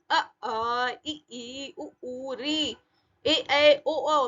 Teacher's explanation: आपकी जबान जो है, जीभ भी है, वो मुंह के किसी भाग को भी स्पर्श नहीं कर रही है, उसमें ज्यादा बाधा उत्पन्न नहीं है। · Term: स्वर